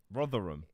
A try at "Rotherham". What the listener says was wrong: It's the place is Rotherham, but you call it Rothingham. You just added in an extra G for some reason.